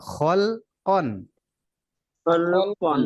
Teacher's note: আর কোন হরফ উচ্চারণে ঠোঁট গোল হবে না, এখানে কোনোটাই নাই, ওয়াও নাই পেশও নাই, তাই হুম। ঠোঁট গোল হবে না, ঠোঁটটা স্বাভাবিকভাবে ধরে রাখতে হবে। আর লাম উচ্চারণে পাতলা।